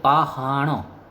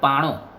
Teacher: આ શબ્દ આજે પણ સૌરાષ્ટ્રમાં બોલાય છે, જેમાં હનો લોપ થઈ ગયો છે, હ સાયલન્ટ થઈ ગયો છે, એટલે કે પાણો.